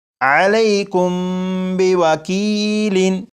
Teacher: جب میم ساکن کے بعد با آ جائے تو میم ساکن میں غنہ کر کے پڑھیں گے